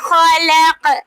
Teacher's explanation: खलक़ काफ पर जब हम वक्फ करेंगे तो काफ साकिन हो जाएगा, तो इस पर हम कलकला करेंगे, वक्फ की सूरत में कलकला होगा।